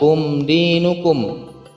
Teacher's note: Ada mim sukun di situ bertemu dengan huruf dal, yakni izhar syafawi, dibaca tanpa adanya dengungan